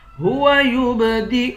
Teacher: یہ جو پیش ہے یہ حمزے کے اوپر ہے، یا کے اوپر نہیں ہے، تو حمزے کی آواز نکالیں گے